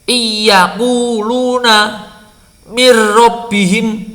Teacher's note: Kalau idgham ditutup pakai hidung tidak ada hambatan sama sekali.